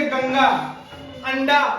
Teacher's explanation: अनुस्वार नासिक, नासिक व्यंजन है, अर्थात इसका उच्चारण नाक से किया जाता है।